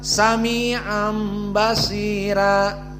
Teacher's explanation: Kalau sebelumnya ya kasroh seperti di sini basira, maka dibaca dengan tarqiq ra, ra-nya muraqqaqah.